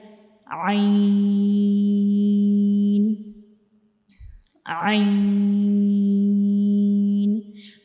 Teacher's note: हम आइन जो होता है इसको गले के दरमियान वाले हिस्से से अदा करते हैं